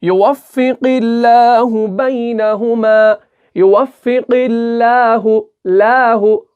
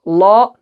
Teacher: युवफ़्फ़िक़िल्लाहु बैनहुमा, युवफ़्फ़िक़िल्लाहु, लाहु, ला नहीं पढ़ना, लाहु, लाहु बारीक पढ़ना है, मुंह भर के नहीं पढ़ना